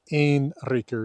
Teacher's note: in Old Norse, or before Old Norse, really at the Proto-Norse period, that N before an R simply disappears